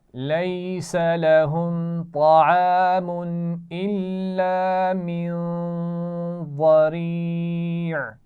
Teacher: نون ساکن کے بعد ضاد ہے تو یہاں پر غنہ ہوگا. اور ضریع آخر میں عین کے مخرج پہ وقف کریں گے تو اس کا خیال رکھنا ہے.